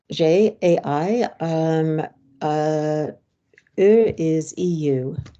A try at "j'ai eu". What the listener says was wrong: No, that's not how we pronounce it. U is not pronounced U there.